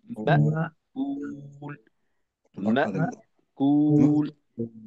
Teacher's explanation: ধাক্কা দিয়ে আওয়াজ, পুরো আওয়াজটাকে বন্ধ করে দিতে হবে